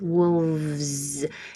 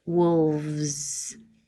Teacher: Wolf, we don't say wolves, we say wolves. Kind of a weird combination going from top teeth on bottom lip v to a Z. Wolves. Keep the airflow going the whole time.